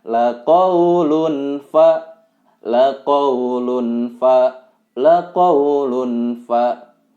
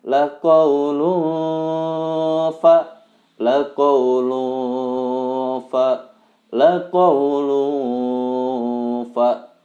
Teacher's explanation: setelah disamarkan ditahan sekitar dua sampai tiga harokat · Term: ikhfa tanwin